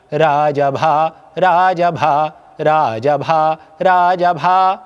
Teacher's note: जैसे मान लीजिए मैंने बोला राजाभा राजभा राजभा राजभा यह मैंने चार बार राजभा बोला तो इसमें 20 मात्राएं हो गई क्योंकि राजभा अपने आप में पांच मात्राएं हैं। र में दो ज में एक और भा में दो। ये पांच मात्राओं का एक राजभा हुआ। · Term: मात्रिक